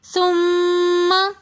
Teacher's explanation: ثم میں میم مشدد ہونے کی وجہ سے ہم غنہ کر کے پڑھیں گے۔